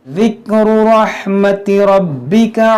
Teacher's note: ये रा मोटा करेंगे, बा को खूब जमाव के साथ